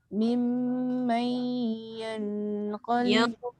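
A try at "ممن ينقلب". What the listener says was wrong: Jangan yan. Nun bertemu qaf, ikhfa. Dia tak boleh bunyi nun lagi. Dia kena bunyi dekat dengan tempat keluar qaf, iaitu pangkal lidah.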